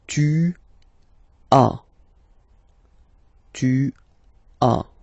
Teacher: Okay, second one, tu as. Okay, as usual in French, final S is not pronounced.